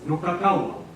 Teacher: with a voiced w in the middle and a voiceless w at the end